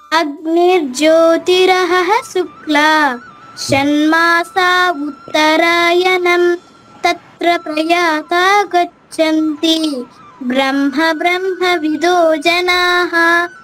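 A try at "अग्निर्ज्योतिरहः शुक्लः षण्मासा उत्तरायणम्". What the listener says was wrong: శుక్ల విసర్గ ఉంది.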